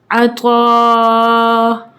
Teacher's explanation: عین زبر ع، طا الف مد زبر طا، عطا. دیکھیں اب ہم اس کو 4 سیکنڈز کے لیے کھینچیں گے کیونکہ یہاں پہ مد متصل کا رول اپلائی ہوگا